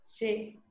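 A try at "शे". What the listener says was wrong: Not she. She. It's a long vowel. She, you have to say. Not she. There is no short A. What I mean short means in terms of time. Matra I'm saying.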